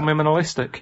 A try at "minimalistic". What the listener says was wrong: Minimalistic. No. No. You're popping in an M where there should be an N. You're putting two M's when there should only be one M, right? Minimalistic.